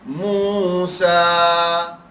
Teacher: یہ واو مدہ ہے، یہ الف مدہ ہے، دونوں کھینچیں گے برابر